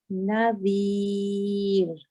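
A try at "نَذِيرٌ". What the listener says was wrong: It can be lighter. Nadhir.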